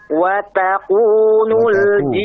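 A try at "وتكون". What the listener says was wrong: tipis ya. Taku, jangan taku, taku. Taku.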